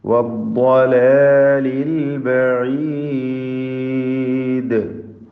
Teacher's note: ദ്വാദിന് പൂർണ്ണമായ തഫ്ഖീം കൊടുത്ത് ഉച്ചരിക്കണം. ഇസ്തിതാല എന്ന പ്രത്യേക സിഫത്തുള്ള അക്ഷരമായ ദ്വാദ് അതിൻ്റെ മഖ്റജിൽ നിന്ന് കൃത്യമായി ഉച്ചരിക്കുക.